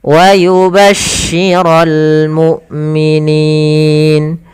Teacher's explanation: Wa yubashshiral, langsung ke lam, ini alif lam qamariyah, atau yaitu alif dan lam yang disertai dengan lam berharokat sukun, yang mana alifnya tidak dibaca